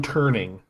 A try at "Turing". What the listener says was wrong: There's no N in there.